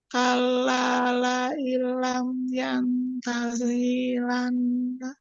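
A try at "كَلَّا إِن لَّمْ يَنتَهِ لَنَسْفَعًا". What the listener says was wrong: Hinya pendek. Lam yantahi lanas. Yantahi lanas fa'am.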